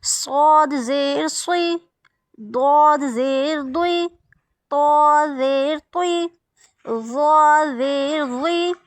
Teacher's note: अब ये देखिए स्वाद मोटा पढ़ेंगे क्योंकि स्वाद हरूफ मुस्तालिया से ना, ये चारों हरूफ मुस्तालिया से है, खूब मोटे पढ़े जाने वाले हैं।